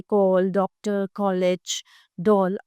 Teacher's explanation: औ की ध्वनि आ और ओ के बीच की ध्वनि है। इसका प्रयोग केवल अंग्रेजी भाषा के शब्दों के लिए किया जाता है।